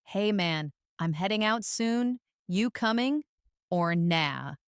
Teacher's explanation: the dropped G in heading and coming